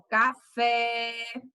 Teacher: veja que o finalzinho ele fala com mais intensidade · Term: oxítona